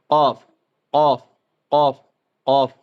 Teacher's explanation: ज़बान की जड़ और नरम तालु से अदा होती है।